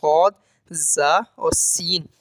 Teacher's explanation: सीरिया कहते हैं सीटी वाले रफ यानी सद जा और सीन जब ये आप अदा करते हैं तो आपको सीटी की सी आवाज अपनी अपने हुरूफ में सुनाई देती है ठीक है तो उन्हे सीटी वाले हुरूफ भी कहा जाता है